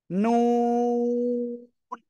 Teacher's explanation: জিহ্বার আগা তার বরাবর উপরের তালুর সঙ্গে লাগাবো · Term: নুন অক্ষরটা